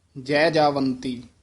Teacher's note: ਇਹ ਰਾਗ ਦਾ ਜਿਹੜਾ ਉਚਾਰਨ ਹੈ ਜੈਜਾ ਤੋਂ ਨਹੀਂ ਕਰਨਾ ਹੈ ਜੈਜਾਵੰਤੀ ਨਹੀਂ ਕਹਿਣਾ ਜੈ ਦੇ ਵਿੱਚ ਡੈਸ਼ ਦੇ ਕੇ ਉਚਾਰਨ ਕਰਨਾ